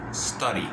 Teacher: La D no la pronuncio D, la pronuncio como una R.